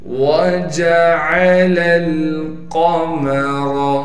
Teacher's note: واو کو بغیر کھینچے پڑھیں گے، جیم کو باریک کریں گے، عین کو صاف کر کے گلے سے نکالیں گے